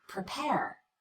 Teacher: the first syllable of the word prepare is the unstressed syllable we cut the vowel we rush through it as quickly as we can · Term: unstressed vowel